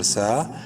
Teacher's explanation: سین کو بھی ایک الف کے برابر لمبا کریں گے